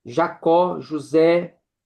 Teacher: É quando nós encontramos a tônica, né, na última sílaba, exemplo, né, Jacó, José. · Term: oxítona